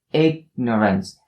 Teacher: For the first syllable, the g sound has to be stopped.